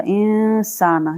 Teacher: तो इसके ऊपर हमने इक्फा किया था, यहाँ पर इक्फा किया था, नून की आवाज को हमने छुपा के पढ़ा था